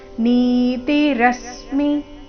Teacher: ನೀತಿ ನಿದೀರ್ಘ ತಿರಸ್ವ ರಸ್ಮಿ ರ ಮೇಲೆ ಆಘಾತ ಇಲ್ಲಿ ಗಮನಿಸಬೇಕಾದ ವಿಷಯ ಮಿರಸ್ವ ಬರಬೇಕು ಅದನ್ನ ದೀರ್ಘ ಮಾಡಬಾರದು ನೀತಿರಸ್ಮಿ ಈ ರೀತಿ